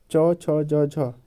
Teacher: यह तालू से बोले जाते हैं